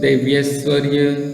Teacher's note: देवी, ऐश्वर्य, देव्यश्वर्य, ई और ए मिलकर ये में परिवर्तित हो गया। यहाँ पर ई और ये।